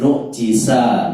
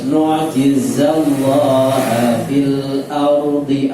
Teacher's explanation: Nu, ainnya tidak boleh berhenti, harus mengalir, bukan nu'jiza tapi nu'jiza, gitu ya. Jiza, za tidak boleh hamas, za tidak boleh mendesis, harus bergetar, jahar.